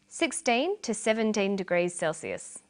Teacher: notice that the two is unstressed